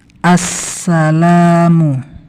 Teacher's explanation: bertasydid maka lam ini kita lewati saja ini tidak terbaca Assalamualaikum lam yang berharakat fathah kemasukan Alif maka panjang 2 harokat